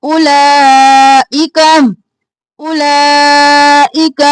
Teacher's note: او لا کو 6 अलिफ के बराबर खींचना है, ई को जल्दी से, का को भी जल्दी से।